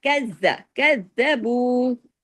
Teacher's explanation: زال کو سختی سے پڑھیے، باریکی سے، لیکن سختی سے ڈبل زال ہے